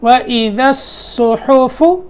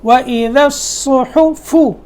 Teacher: وَإِذَا الصُّحُفُ فا پیش فو، یہاں فا کو لمبا نہیں کرنا